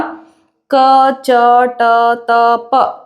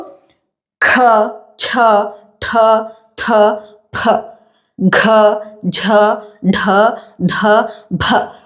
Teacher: ಮಹಾಪ್ರಾಣ ಅಕ್ಷರಗಳನ್ನ ಉಚ್ಚರಿಸುವಾಗ ಬಹಳಷ್ಟು ಗಾಳಿ ಏನ್ ಮಾಡಬೇಕು ನಮ್ಮ ಕೈಗೆ ಬಡಿಬೇಕು